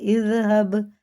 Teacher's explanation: با میں قلقلہ زال باریک ہے